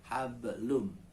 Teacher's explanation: Hab itu mantul namanya, hablum. Nah, karena adanya di tengah, maka dia menjadi qalqalah yang ringan. Pantulannya ringan, kecil saja pantulannya